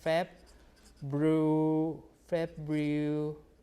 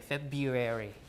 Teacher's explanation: One R is gone because when you pronounce two Rs together, perhaps almost back to back in a row, uh it's hard to do.